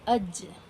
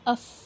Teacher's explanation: لیکن جب آپ فا کو پڑھتے ہیں اف، تو آپ دیکھیں گے کہ ایئر فلو کی جو مقدار ہے وہ بڑھ جائے گی۔ جیم کو ادا کرتے وقت اتنا ایئر فلو نہیں ہے جتنا فا کو ادا کرتے وقت محسوس ہوتا ہے۔ تو یہی بتایا جا رہا ہے کہ جب آپ فا ادا کریں تو ایک ہوا کا زور، ایک ایئر فلو آپ کے ہونٹوں سے، آپ کے دانتوں سے پار ہو کر باہر آ جائے۔